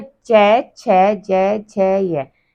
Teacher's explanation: च, छ, ज, झ, य, तो ये जो होते हैं हमारे वर्ण, ये बोले जाते हैं तालु से।